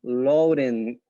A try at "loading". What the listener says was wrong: no i'm hearing too much front loading